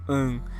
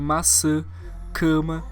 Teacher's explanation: não é o A nasal como an, é um som oral, tipo em maçã, cama.